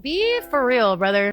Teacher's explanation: she doesn't reduce the vowel sound of the word real